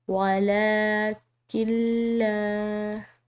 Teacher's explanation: لام کے اوپر کھڑی زبر کی وجہ سے اس کو ایک الف کی مقدار لمبا ادا کیا، اور یہاں پر جو ہے یہ لام مشدد آ رہی ہے، اور مشدد حرف جو ہے وہ پیچھے والے حرف سے مل کر پڑھا جاتا ہے، تو یہاں پر لام مشدد کے پیچھے والا جو حرف ہے وہ ساکن ہے.